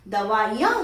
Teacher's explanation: जब हम दवाइयां लिखेंगे तो ई का उच्चारण हम ह्रस्व ई का उच्चारण करते हैं